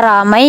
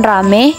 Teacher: perubahan dua bunyi vokal atau vokal rangkap atau diftong menjadi vokal tunggal atau monoftong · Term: monoftongisasi